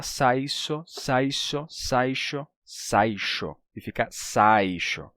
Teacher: ele termina palatalizando o som do s que vem depois, que a gente pode chamar também ele, ele causa um chiado.